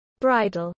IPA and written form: ˈbɹaɪdəl (bridal)